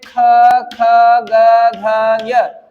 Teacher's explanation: कंठ वर्ण कहा जाता है। इनका उच्चारण स्थान कहा जाएगा कंठ।